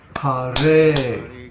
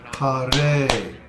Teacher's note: Ha in Hare is a short syllable, but the Re is a long syllable because the vowel is A.